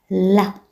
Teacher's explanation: Kitambaza utamkwa wakati ncha ya ulimi imegusa ufizi na kuzuia mkondo wa hewa kiasi cha kuruhusu hewa ya kiwango fulani kupitia tu pembezoni pa ulimi.